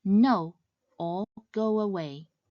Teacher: the fourth tone starts at the mid range and drops sharply downwards. This tone is similar to the tone used when expressing anger or frustration.